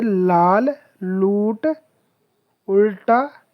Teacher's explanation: ल ध्वनि लाल में ल और आ के कारण कंठस्थ से प्रभावित है।